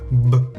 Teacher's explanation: ¿Notas cómo vibra la garganta? Así se notan las consonantes sonoras.